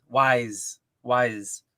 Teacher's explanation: But it's definitely a Z sound like zebra and not an S sound like snake.